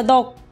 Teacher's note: 시옷이 떨어지죠. 자음군 단순화 탈락 맞죠?